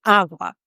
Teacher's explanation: awa starts with a strong a because that is the strongest syllable in the word awa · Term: strong a sound